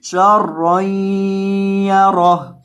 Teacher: وقف کی حالت میں ہا کو ساکن کر دینا ہے